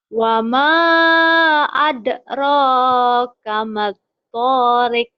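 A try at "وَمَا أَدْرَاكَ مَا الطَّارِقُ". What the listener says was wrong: Kurang nyamber. Tapi jangan kelihatan sambarannya.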